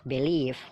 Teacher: Jadi penekanannya itu mengarah ke leave, leave-nya ditekan ya. Jadi b-nya itu singkat aja. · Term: stressing atau penekanan